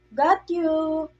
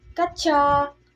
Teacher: In Philippines, we pronounce in a full term, in full syllable, while in Americans, they shorten the word.